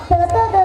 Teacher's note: ಹಲ್ಲಿನ ಸಹಾಯದಿಂದ ಉಚ್ಚರಿಸಲ್ಪಡುವಂತಹ ತ ದ ದ ಅನ್ನೋ ಅಕ್ಷರಗಳನ್ನ ನಾವು ದಂತವ್ಯ ಅಂತ ಕರೀತೀವಿ